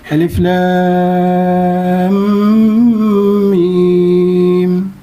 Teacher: Antara lam dengan mim dan dengan mim tu ada dengung 2 harakat dan juga mim tu 6 harakat. Ya, alif 6 2 6. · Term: harfi musaqqal